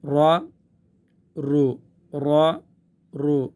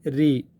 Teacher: رو پر ہے رو. پیش اور زبر کی صورت میں یہ پر ہے، زیر کی صورت میں یہ باریک ہے